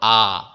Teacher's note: আ উচ্চারণ করে দেখো মুখে অনেক বড় একটা জায়গা হলো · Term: বিবৃত